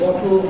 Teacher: I released it during the L sound, so there was no separate schwa there. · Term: released laterally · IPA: / w.ɒ.t.l /